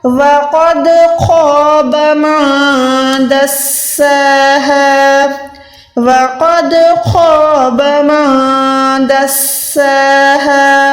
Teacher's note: حال زبر ہا کو بھی آپ نے 1 سیکنڈ کھینچ کے پڑھنا ہے, حلق کے نیچے والے حصے سے ادا کرنا ہے